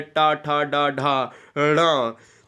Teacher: ये मूर्धन्य है, ये मूर्धन्य स्पर्श व्यंजन है।